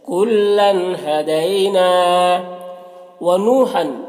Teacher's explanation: نو یہاں پر واو مدہ ہے، ایک الف کے برابر کھینچیں گے۔